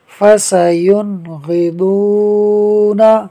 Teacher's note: فا زبر فا، سین زبر سا، فسا، یا نون پیش یون، فسیون، غین زیر غی، فسینغی، ضاد واو پیش دو، فسینغضو، نون زبر نا، فسینغضون، نون ساکن کے بعد غین حروف حلقی میں سے ہے، لہٰذا اظہار کا قاعدہ ہوگا، یعنی نون ساکن میں غنہ نہیں ہوگا۔